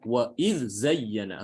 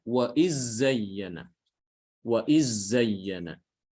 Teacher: Jadi dibaca wa idz zayyana, harus jelas. Ada bacaan lain selain riwayat Hafs, ya, yang mengidghamkan dal ke zai. Jadi dibacanya wa iz zayyana. · Kita bacanya adalah dengan mengidharkan huruf dal ke zai. Jadi dibaca wa idz zayyana, harus jelas.